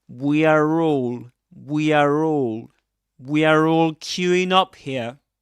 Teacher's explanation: he does pronounce the R there when he says we are all